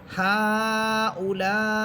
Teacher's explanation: হবে এবং হামজাকে ধাক্কা দিয়ে পড়বেন অর্থাৎ হামজা যেহেতু সাকিন হইতেছে সাকিন অবস্থায় হামজাকে ধাক্কা দিয়ে পড়তে হয়